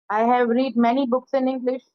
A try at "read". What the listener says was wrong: रीड नहीं, उसको third form में रेड बोलते हैं। स्पेलिंग स्पेलिंग तो वही रहती है, लेकिन प्रोनाउंसिएशन रेड हो जाता है third form. I have रेड many books in English.